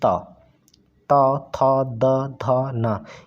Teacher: ध न यह जो आपके त वर्ग के पांचों वर्ण है इनको बोलने के लिए जो आपकी जीभ है व ऊंचे दांत से स्पर्श करती है इसलिए इनको दंत या दंती व्यंजन कहते हैं या दंत व्यंजन · जिन वर्णों का उच्चारण करने पर जीभ का अग्र भाग ऊपर दांतों को स्पर्श करता है